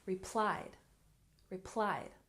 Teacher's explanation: And replied has stress on the second syllable.